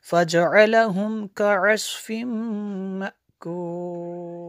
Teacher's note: حمزہ ساکنہ کو جھٹکا دیں گے